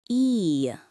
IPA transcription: iː